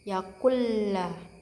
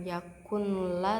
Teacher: Nah, di sini terdapat nun sukun bertemu lam. Cara bacanya tanpa didengung, jadi langsung dibaca lamnya. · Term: idgham bilahuna